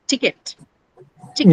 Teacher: So the only the first sound in ticket is aspirated.